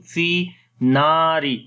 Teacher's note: noon also we long due to alif madda